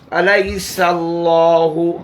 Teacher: अल्लाह का लाम मोटा पढ़ा जाएगा क्योंकि अल्लाह के लाम से पहले फ़तह है